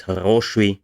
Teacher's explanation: And then the other example is хороший, in which case the second syllable remains an O because it is now the stressed one